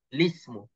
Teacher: pindah baris hamzah wasal i itu kepada lam mati jadi li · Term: naqal